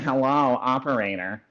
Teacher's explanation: passing everything through the nose, where it's almost hard to understand. I always think of the old operator sound.